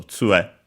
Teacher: it's actually accented on the first syllable